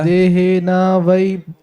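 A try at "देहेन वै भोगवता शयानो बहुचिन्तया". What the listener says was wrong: भगो नहीं भाई, भोग है। देहेना वै भोगवता शयानो बहुचिंतया।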